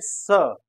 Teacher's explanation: स का उच्चारण करते समय हमारी जीभ नीचे वाले दांत के पास जाती है तो चूंकि जीभ नीचे वाले दात के पास जाती है इसलिए